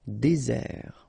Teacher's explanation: really this z sound just because you get one S between the two vowels, ok, z, désert.